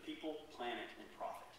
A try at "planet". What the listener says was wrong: Planet. You said people, planet. You said plant instead of planet.